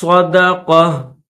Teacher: یا ایو ایو الذین آمنوا اذا ناجیتم الرسول فقدموا بین یدی، یا کے اوپر زبر ہے، دال یا زبر دئی، یدی نجواکم صدقہ، صدقہ یہ تا ہے، گولتا ہے، یہ اس کے اوپر 2 زبر ہے اور اسٹاپ بھی ہے، یہاں پر اسٹاپ بھی کریں گے، اور اس گول تا پر جب ہم اسٹاپ کریں گے تو اس کو ہم ہا پڑھیں گے